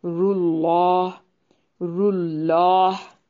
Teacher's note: अल्लाह को मोटा अदा करेंगे